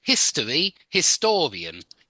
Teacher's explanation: history is on the his history but historian again it goes on to the second syllable